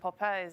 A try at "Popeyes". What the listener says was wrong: No, there's more emphasis on the. You said more emphasis on the eyes. Popeyes. As opposed to just Popeyes.